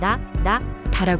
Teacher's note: 한국어의 다는 혀끝이 윗니 뒤에 닿았다가 떨어지면서 나는 소리지만 일본어의 다는 혀가 닿는 위치가 조금 더 안쪽이고 울림이 동반됩니다